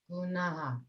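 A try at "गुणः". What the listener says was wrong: Try the na sound again. Gunaha.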